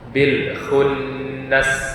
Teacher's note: Kemudian pada nun musyaddad, nun yang bertasydid, maka harus ditahan dulu bacaannya, dibaca dengan dengung